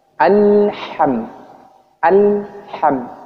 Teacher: alham itu ditahan setelah itu dilepas langsung di baca huruf berikutnya